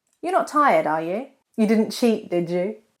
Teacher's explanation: when your intonation falls you probably already know the answer